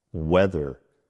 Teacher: This uses the voice TH in the middle of the word.